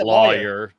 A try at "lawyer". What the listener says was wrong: It's not lawyer because lawyer would be LOY. It's LAW.